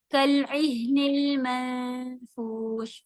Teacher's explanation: فا کی طرف نون کی آواز کو چھپائیں گے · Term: اخفا